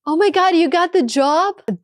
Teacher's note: That upward melody shows genuine excitement.